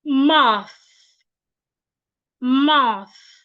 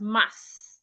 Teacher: Your tongue should be in between your teeth like this. My tongue is not behind my teeth. It is in between my teeth.